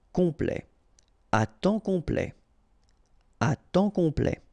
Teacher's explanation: OM is nasal here, just because you get your P after that, so it's on, complet, à temps complet, à temps complet.